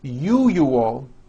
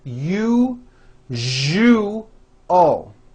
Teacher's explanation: that second syllable jus the one with the underline needs to be voiced put your hand on your throat and feel for the vibration